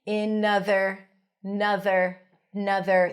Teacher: The end becomes the beginning of the word other.